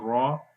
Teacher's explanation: جب را کو زبر کے ساتھ پڑھیں گے پھر را موٹا پڑھا جائے گا